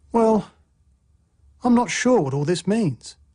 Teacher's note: Finally, a fall rising tone expresses uncertainty.